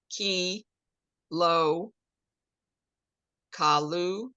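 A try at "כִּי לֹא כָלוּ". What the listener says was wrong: Not ka, there's no dot in there. And what is this? You got the challah.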